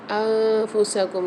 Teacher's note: انفسکم، یہاں پر دوبارہ افعال غنہ والا قاعدہ ہو رہا ہے، نون ساکن کے بعد فا آ رہی ہے تو یہاں پر ہم غنہ کر کے پڑھیں گے